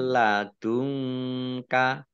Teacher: nun sukun bertemu dengan huruf lam bacaan Idgham bilaghunah masuk dengan tidak mendengung milladunka Dun dalumah Nun eh nun sukun bertemu dengan huruf Kaf